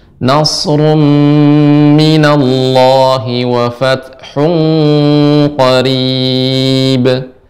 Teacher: Nasrum ru itu monyong sedikit, kembali lagi.